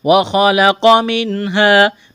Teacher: وَخَلَقَ مِنْهَا، نون ساکن کے بعد حروف حلقی میں سے ہا ہے، نون ساکن پر غنہ نہیں کریں گے، آواز ناک میں نہیں چھپائیں گے · خا کو موٹا کرنا ہے، قاف کو موٹا کرنا ہے، جلدی پڑھیں گے، کھینچنا نہیں ہے